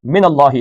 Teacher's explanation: اللہ کا لام موٹا پڑھنا ہے